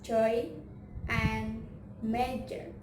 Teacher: And then j is the blade of the tongue to hard palate and vibration, or voice alveopalatal affricate